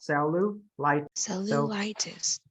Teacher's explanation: So it's cellu. See how my first two syllable I'm flat here, and then the third one I'm up.